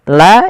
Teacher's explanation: La awalnya 2 harokat, la karena adanya hamzah maka dia menjadi 4 harokat atau 5 harokat. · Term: mad wajib muttasil